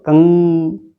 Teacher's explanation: ऐसा लग रहा है नाक से आवाज आ रही, हमारी वाइब्रेशंस नाक में हो रहे हैं, तो कंग, कहा, कहा, कंठ द्वार से कहा।